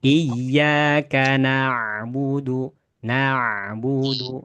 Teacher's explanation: itu namanya tawasut pada huruf ain ya yang punya sifat bainiah